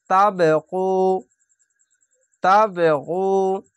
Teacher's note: তাবগু, এখানে কলকলা, কলকলাটি ধাক্কা মেরে নিচে সাউন্ড আসবে, তাবগু, তাবগু, অবশ্যই গয়নটিকে গু মোটা করে পড়বেন।